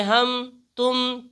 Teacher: ہم اور تم کی میم کو جیسے ہم بالکل ظاہر کر کے پڑھتے ہیں، اس میں غنہ ادغام نہیں کرتے ہیں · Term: اظہار شفوی